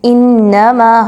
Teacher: حمزہ اور نون کو اچھے سے مضبوطی کے ساتھ ملائیں گے کیونکہ نون پر مشدد آ رہا ہے۔ میم زبر الف ما، الف مدہ ہے، 2 حرکت کے برابر لمبا کر کے پڑھیں گے۔